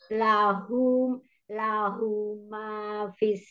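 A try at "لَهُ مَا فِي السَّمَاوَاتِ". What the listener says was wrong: Lahunya panjang.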